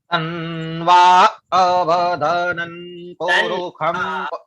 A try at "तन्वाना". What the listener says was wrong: ना, तन्वाना, ना भी है,